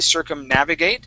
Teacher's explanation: it's circumnavigate with the accent on the a okay circumnavigate then when we add the shun on the end